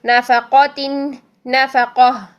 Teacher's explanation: ٹھیک ہے، نافقہ، قاف موٹا رکھنا ہے، نافقہ نہیں کرنا ہے.